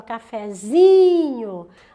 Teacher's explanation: a sílaba tônica não é mais no fé, é no zi